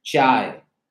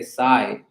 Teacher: people here speak asames and asames does not have the CH sound